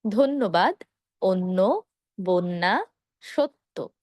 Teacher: অধ্বনি এর পরে জফলা থাকার কারণে শুরুর অ এর উচ্চারণটা ও এর মতো হবে।